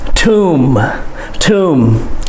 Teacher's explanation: bury people we call that a tomb okay it's not tomb the b is silent and the o has the u sound · The B is silent, and the O has the oo sound.